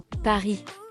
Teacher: También hay que prestar atención a la R uvular como Paris.